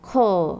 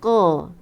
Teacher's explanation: Qaf ni dia tak ada hamas. Okey, lepas tu dia isti'la, dia angkatnya pangkal lidah.